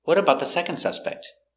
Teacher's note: we stress second and we have n d you don't hear the D with n d